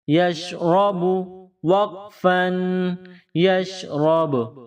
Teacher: را با کے ساتھ ٹچ کریں گے، ٹچ کر کے جدا کریں گے۔ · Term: قلقلہ